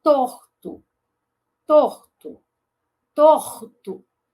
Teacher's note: o rótico desvozeado, porque a próxima consoante é desvozeada, né? O T, ele é desvozeado.